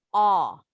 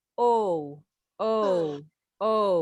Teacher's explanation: Kalau yang ini, huruf A ada titik 2-nya. Ini huruf O campur dengan A. Jadi O-nya nggak monyong bulat ya. Jadi buka mulut O-nya lebar.